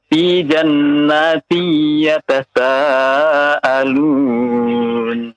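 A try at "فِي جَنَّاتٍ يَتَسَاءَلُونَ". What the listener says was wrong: Iya.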